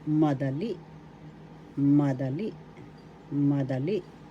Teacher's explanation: the accent is in the third syllable